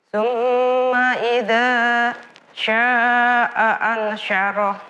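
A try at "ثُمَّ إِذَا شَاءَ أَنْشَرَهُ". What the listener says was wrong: Ya, sya'a panjang. Sya'a 4 harokat. Ya, jangan putus-putus. Tsumma idza syaa'a ansyarah. Bukan idzanya yang panjang tapi syanya. Tsumma idza syaa'a ansyarah. Iya, berdengung.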